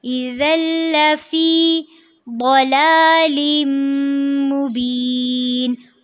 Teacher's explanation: ذال کو نرمی سے پڑھنا ہے اور لام کے ساتھ جب اس کو آپ جوائن کریں گے تو اس کو آپ نے تھوڑا سا ٹائم دینا ہے